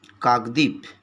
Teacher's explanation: কাকদ্বীপ কিন্তু ডর নিচে যে বটা আছে এটা কিন্তু আমরা উচ্চারণ করছি না